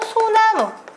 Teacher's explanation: 리을이 그냥 통째로 없어진 거 보이셔야 됩니다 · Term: 리을 탈락